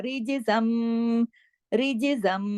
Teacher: رج جمانا نہیں ہے، ہلا دینا ، رجزم، رجزم، زا 2 زبر زن ہے لیکن تنوین ختم · را تو ہم باریک پڑھ رہے ہیں لیکن جیم پہ کلکلا آ گیا ، کیوں؟ کتب جد کے حروف میں سے ہے، اور جزم